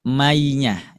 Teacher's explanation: Masuk ke naqis. Caranya ketika diucapkan maka masih ada suara yang keluar dari hidung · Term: idgam biguna naqis